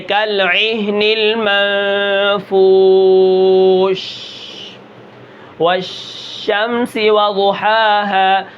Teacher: تفشی صرف شین کے اندر ہوتی ہے، جب بھی شین کو ہم پڑھیں گے اس کے اندر کیا ہوگی؟ شین کی آواز منہ کے اندر پھیل جائے گی